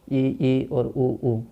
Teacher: यानी कि ई और ऊ संवृत स्वर हैं